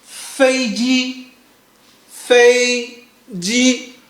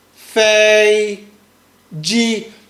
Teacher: Number one, it's on your highest pitch. It means that you speak very loud, and also you speak bit long when you are practicing, like it's bit long, as you can see. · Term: flat tone